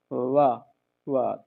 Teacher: तो ये जो वा है ना ये दंतोष्ठ होता है